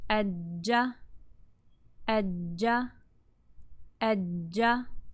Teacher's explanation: So what you're going to see is the tongue is going to go up, stop the flow of air completely, then it's going to be released a little bit, letting some air come through with friction. So it's going to touch first. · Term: jeem